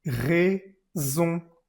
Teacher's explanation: La ON está en una sola sílaba, pues se va a pronunciar como una vocal nasal, con la boca muy, muy, muy cerradita.